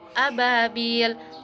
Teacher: Cara bacanya itu bunyi bi dipanjangkan dua harokat. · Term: mad tabi'i